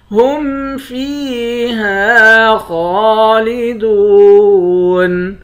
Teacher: فا کو یا کے ساتھ ملا کر یا کو ایک الف کے برابر کھینچیں گے، یا حروف مدہ ہے، ہا کے بعد الف ہے، الف حروف مدہ ہے، ایک الف کے برابر کھینچ کر پڑھتے ہیں۔